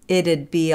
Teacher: the T again is going to be the flap D